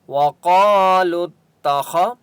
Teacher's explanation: خا مستعلیہ میں سے ہے، اس لیے خا کو موٹا پڑھیں گے۔